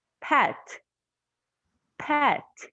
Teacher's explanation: i don't use my throat i don't use my vocal cords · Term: voiceless sound